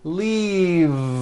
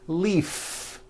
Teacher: If you stop the voicing at the end of the vowel E, then you would be saying leaf with an unvoiced F. And the word we're trying to say is leave with that voiced V.